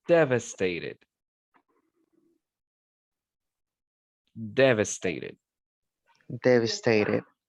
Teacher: the stress is in the first syllable devastated